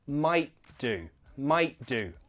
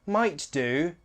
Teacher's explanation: I glottalize that t might do it flows nicer that way you don't have to